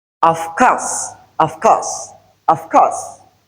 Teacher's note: voiced labiodental fricative sound changes to the voiceless labiodental fricative sound, which is in order to go with the k, which is a voiceless velar sound.